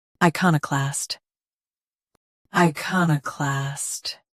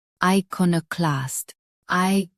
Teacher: US uses ka. UK uses ko. Watch the middle sound.